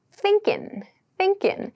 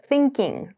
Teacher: So we tend to see this use a lot in ing verbs, actually, verbs that end in ing to show that the G sound is not clearly pronounced. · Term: G sound is missing